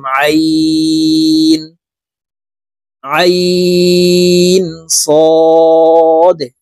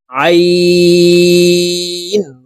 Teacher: আইন হরফটি হলকের মধ্যখান থেকে চাপ দিয়ে উচ্চারণ করব, কারণ আইনের মখরাজ হলকের মধ্যখান থেকে হবে।